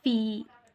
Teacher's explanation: ya madda. Stretch it for 1 second.